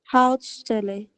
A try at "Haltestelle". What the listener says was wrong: Schau mal, es gibt ein E zwischen Halt und Stelle.